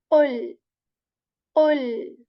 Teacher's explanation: So again, this next ayah is starting from the letter which is a heavy one, Qaf letter here, back part of the tongue. It is, it touches the soft palate with strength